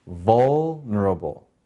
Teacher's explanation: vul has the accent, the first syllable